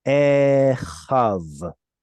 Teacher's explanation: we see the yod, but unfortunately, modern pronunciation does not pronounce this yod.